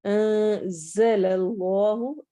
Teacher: جلالہ والے لام کو ہم موٹا کر کے پڑھیں گے کیونکہ اس سے پہلے والے حرف پر فتحہ زبر آ رہی ہے لام پر.